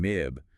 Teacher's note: You'll notice that buzzing sensation in your nose for MIB because that vellum is open, letting the air through. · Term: nasal sounds